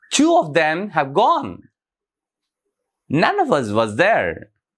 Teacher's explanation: the stress pattern is stress unstressed unstressed unstressed and finally stressed so the first word and the last word are stressed two